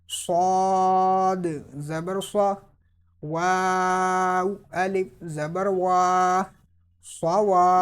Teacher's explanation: Swad will be pronounced with whistle and in a thick tone because swad is from Mustalia letters as well as from Safiria letters.